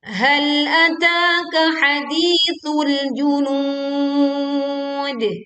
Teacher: kita memantulkan dal sukun dengan suara yang miring dan kuat